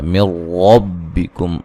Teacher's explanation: نون ساکن کا یہاں ادغام ہے لیکن بلا غنہ ہے